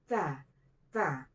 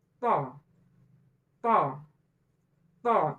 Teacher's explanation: Kalau ta, dia ada sifat hamesnya. Kalau huruf to, tidak ada sifat hamesnya. To, to, to, ada tekan, gitu ya.